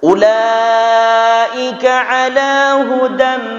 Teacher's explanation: Ulaika, satu kalimat ada hamzah di dalamnya, maka dia sebut dengan mad wajib. Tekan sampai 5 atau 6 harokat.